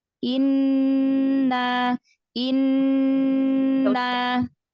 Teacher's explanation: Nun tasydid lembut aja masuknya, jangan ditekan